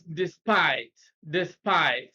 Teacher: despite stress is on the second syllable